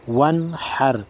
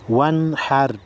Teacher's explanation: نون ساکن ہے اس کے بعد حروف خلقی میں سے حا آئی ہے لہذا نون ساکن غنہ نہیں ہوگا ون حر. حمزہ خا زبر اخ را زبر را اخ را.